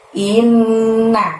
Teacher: Innya ditahan, ditekan selama 2 harokat atau 2 ketukan, karena ada nun tasydid di sana